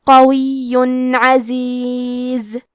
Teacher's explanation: کلمت قویٌ میں قاف کی ادائیگی زبان کے جڑ اور تالو کے نرم حصے سے ہے. قاف حروف تفخیم میں سے ہے تو ہم یہ حرف کو موٹی آواز میں پڑھیں گے. · قاف حروف تفخیم میں سے ہے تو ہم یہ حرف کو موٹی آواز میں پڑھیں گے. آخری میں یا پہ تشدید ہے لہذا ہمیں 2 حرف کے برابر یا کو پڑھنا ہے اور کیونکہ تشدید تنوین پیش کا ہے پھر حرف العین آتا ہے کلمت عزیز اور عین حروف الاظہار میں سے ہے تو ہم تنوین کو ظاہر کریں گے اور اسے نون ساکن پڑھیں گے اور بغیر غنہ سے یہ حکم کو ادا کریں گے.